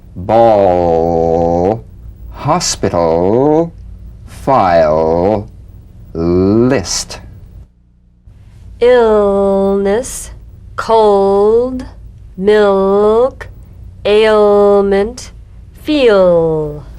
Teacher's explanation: the l so feel the n leaving just a tip there you feel a vowel-like resonance only impeded by the tongue position